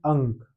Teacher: इसका उच्चारण स्थान नासिका से होता है। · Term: अनुस्वार